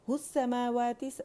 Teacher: آواز ایک کاؤنٹ کے لیے اوپر گئی، یہ 2 کاؤنٹ کے لیے مد اصلی بن رہا ہے